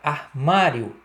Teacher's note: Lembra que o O vai ter som de U, né?